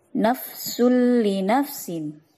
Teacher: sul li nafsin disebut bacaan idgham bila ghunna sebab terdapat harokat tanwin yaitu dhammatain bertemu dengan lam